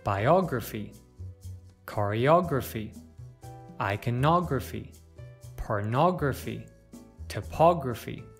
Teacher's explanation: With this suffix, we stress the syllable immediately before it.